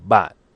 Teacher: the sharp falling tone with a heavy glottal stop. Bat, which is fifth tone in Mandarin Chinese.